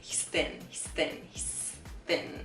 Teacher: it's 3pm we're not exaggerating the th sound so much there it's like the th sound happens but the tongue doesn't come out between our teeth